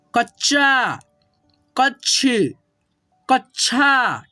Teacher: च को पढ़ रहे हैं लेकिन आपको जो है ना पूरा क्लियरली नहीं सुनाई देगा। कच्छा, इसमें अ का साउंड नहीं होता है, ठीक है। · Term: आधा